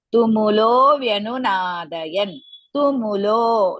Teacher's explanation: Tumulo, lo is dirgha. The tu and mu are risva.